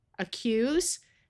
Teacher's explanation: This A will schwa and sound like a short U.